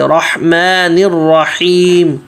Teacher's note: ہا حلق سے، رحمن الرحیم، رحیم کا ہا بھی حلق سے اور آخر میں میم واضح